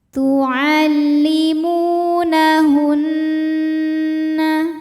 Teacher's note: Kemudian ada hukum gunnah musyaddadah karena ada nun yang bertasydid. Cara bacanya dengung, bunyi n tahan sampai ada suara masuk hidung kurang lebih 2 harokat.